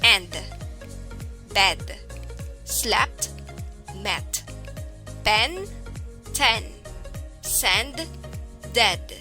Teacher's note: lips are not rounded and are near the rest position the jaw is open a little it is a short sound and considered as a lax vowel